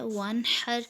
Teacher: اس میں بھی نون ساکن کے بعد عین ہے، اس میں بھی اظہار کا قاعدہ ہو رہا ہے۔ ونحر میں بھی نون ساکن کے بعد ہا حروف ہلکی میں سے، اس لیے اس میں بھی اظہار ہو رہا ہے